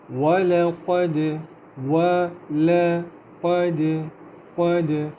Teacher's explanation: اللہ تعالیٰ فرماتے ہیں اعوذ باللہ من الشیطان الرجیم بسم اللہ الرحمن الرحیم وَلَقَدْ كَذَّبَ الَّذِينَ مِن قَبْلِهِمْ فَكَيْفَ كَانَ نَكِيرِ وَلَقَدْ قد وا پتلا ہے، واو میں ہونٹوں کو گول کریں گے، لام بھی پتلا ہے، قاف جو ہے وہ تھوڑا موٹا کر کے پڑھیں گے اور دال پہ باؤنس کریں گے۔